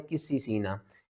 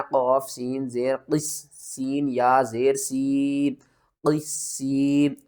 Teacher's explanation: यहाँ पर देखें तो सीन के ऊपर तशदीद भी है और आगे या साकिन से पहले ज़ेर है, हरूफ मद्दा है, फिर भी हरूफ मद्दा है, 2 हरूफ मद्दा आ रहे हैं और 3 सीन आ रही हैं। तो क़ाफ़ को आपने मोटा करके सीन के साथ मिलाना है